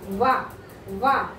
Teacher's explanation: దంతాలు ఓష్యాలు రెండింటి నుంచి ఉద్భవించిన అక్షరం కాబట్టి ఓష్యములు అని చెప్పేసి అంటారు. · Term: దంతోష్యము